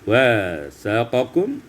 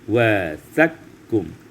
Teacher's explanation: tidak ada huruf qaf lagi, tidak ada sifat qafnya lagi, lebur secara sempurna kepada huruf kaf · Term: idgham kabir kamil